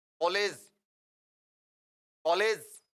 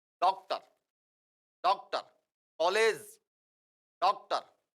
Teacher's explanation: मैं उदाहरण के रूप में आपको बताऊं, जैसे एक शब्द है कॉलेज, कॉलेज। ये अ जो है वो आ और ओ के बीच की ध्वनि है, आ, और एक होता है ओ और इनके बीच में होता है अ। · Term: गृहीत स्वर